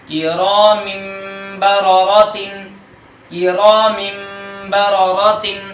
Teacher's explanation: نون تنوین کو میم سے بدل دیں گے اور غنے کے ساتھ پڑھیں گے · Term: اقلاب